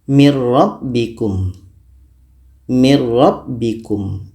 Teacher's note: tidak terdengar bunyi Nun lagi kita baca Mir rabbikum Mir rabbikum Oke mati sudah masuk secara · Masuknya nun kepada ro itu secara sempurna karena murni kita baca ro saja. Tidak terdengar bunyi nun lagi. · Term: idgham bila ghunah, idgham bila gunnah